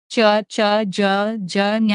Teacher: అంగిలి సహాయంతో పలికే చ జన్ అక్షరాలను తాలవ్యాలు అంటారు. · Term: తాళవ్యాలు